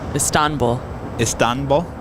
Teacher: you accent the second syllable